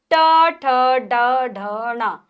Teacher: मूर्धा या मूर्धा नहीं, मूर्धा, मूर्धा यानी कि दांतों के ऊपर वाले भाग को हमारी जीभ स्पर्श करती है।